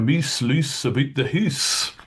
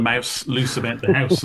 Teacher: if you're familiar with Scottish varieties of English, you might be familiar with areas where the Great Vowel Shift didn't happen